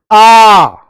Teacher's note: पूरा मुख खुला एक ही ऐसा जो पूरा मुख खोल के ही बोला जाएगा। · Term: विवृत स्वर